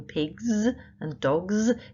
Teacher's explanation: when we add that s to make the plural sound like in pigs and dogs it makes z sound but it's still adding letter s to make the plural and